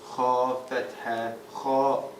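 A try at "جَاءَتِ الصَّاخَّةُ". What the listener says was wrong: You missed the shadda on this one. You missed the shadda on this one. So this is 4 to 5 counts and this is 6 counts. I broke as-sakhatu down into what it really is. So here sakhatu has a shadda sign, and a fatha sign, right? That when you're spelling, that is split with the shadda coming first.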